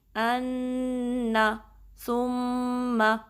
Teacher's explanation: اتنا لمبا نہیں کرنا، زبر کو 1 کاؤنٹ